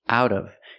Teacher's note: The T changes to a fast D.